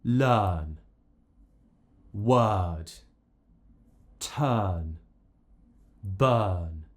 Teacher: in all of these words I'm replacing the r with this uh sound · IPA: /ɜː/